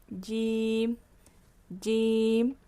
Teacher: جو ہمارے زبان کا بیچ کا حصہ ہے وہ اوپر کی تالو کو لگے گا۔ اپنی زبان باہر نکالیں اور بیچ کا جو حصہ ہے اس کو دیکھیں، اور وہ اوپر کا جو ہمارا تالو ہے آپ دیکھ سکتے ہولو ہے نا، ایک گڈھا سا ہے، وہاں پہ جائے گا اور ادا ہوگا۔